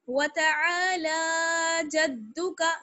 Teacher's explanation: لام جو ہے اس پر کھڑا زبر ہے، اس لیے کھینچ کر پڑھنا ہے. وتعالى جدك، جتنا عین کو ہم کھینچیں گے اتنا ہی لام کو کھینچیں گے، ٹھیک ہے نا؟ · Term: لام کو کھینچنا